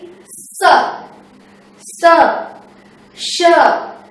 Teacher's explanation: उच्चारण में हम घर्षण का हमें घर्षण फील होता है मतलब हमारे मुंह से जो हवा निकलती है वो घर्षण के साथ निकलती है